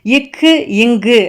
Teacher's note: நாவின் முதல் அன்னத்தின் அடியை பொருந்துவதால் பிறப்பது தான் வந்து இக்கு இங்கு.